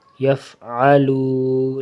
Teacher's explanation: لام کو لمبا کرنا ہے، کھینچنا ہے تھوڑا سا ایک الف کے برابر